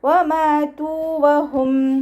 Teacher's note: വ ഉച്ചരിക്കുന്ന സമയത്ത് ചുണ്ടുകളെ വട്ടത്തിൽ പിടിച്ചു കൊടുക്കുക മീമിന്റെ കൂടെ അലിഫ് മദ്് വന്നു രണ്ട് കൗണ്ട് മാത്രം നീട്ടി കൊടുക്കുക ത